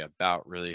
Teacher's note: when you say about really about really I would use a held t there